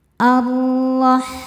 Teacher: Ro dibaca tafkhim karena harokatnya fathah. Cara bacanya ditebalkan. Ar-Rahman. Saat berhenti hukumnya adalah mad arid li sukun karena ada mad tabi'i yang bertemu dengan huruf yang disukunkan karena waqaf.